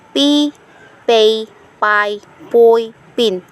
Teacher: Voiceless bilabial stop. P.